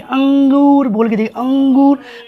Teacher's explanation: ये आप इसमें हल्की सी नाक की साउंड आएगी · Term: अनुनासिक